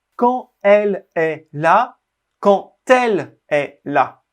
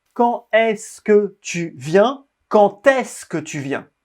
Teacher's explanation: quand le mot quand se termine par la lettre D mais quand on fait la liaison on prononcera t le D devient t